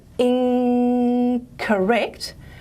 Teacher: you say that word slowly in correct you should notice that you actually don't have an alveolar nasal there you have a velar nasal · the velar nasal is assimilating to the following stop consonant which is also velar